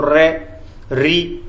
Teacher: इसमें जीभ है वो क्या है कंपन करती है, 2-3 बार जिह्वा जो है कंपन करती है, उसको प्रकंपित बोलते हैं।